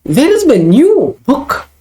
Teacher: Here, new is stressed.